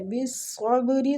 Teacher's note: صاد مستعلیہ حروف ہے، اس کو پور پڑھیں گے اور با پہ قلقلہ۔